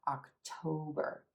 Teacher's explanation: the Oh as in gold so it's not October October October make sure you give that o as in gold and the second syllable a little stretch we're going to hold it a little longer and say it